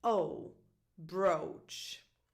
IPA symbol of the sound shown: oʊ